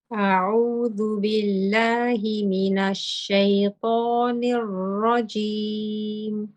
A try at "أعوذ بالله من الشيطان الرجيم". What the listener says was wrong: It's just mina now, the noon. And you think because you were thinking about the ra's coming and you're focusing, so you just lost the noon. Mina shaytan.